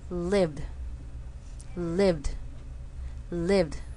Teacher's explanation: the word live which ends in a V sound which is voiced when I make the word into a past participle I get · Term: D sound